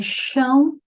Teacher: É chão, já está vendo o tio que é nasal, vogal mais semivogal, ditongo, decrescente